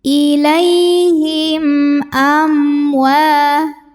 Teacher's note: yang menghadapi huruf selain mim dan ba hurufnya Hamzah ya maka mim sukun ini kita bunyikan dengan jelas ya tidak perlu ditahan ilaihim amwa am ada hukum izhar syafawi karena ada mim sukun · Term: idhar syafawi